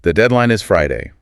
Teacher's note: my voice goes up a little bit at Friday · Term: upward lilt